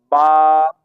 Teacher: با دونوں ہونٹوں کے تر حصہ سے ادا ہوتا ہے